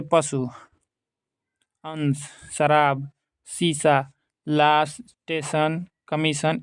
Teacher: तालव्य स और स के दंत स के उच्चारण में भेद स्पष्ट है। जहाँ तालव्य स के उच्चारण में जिह्वा तालु को स्पर्श करती है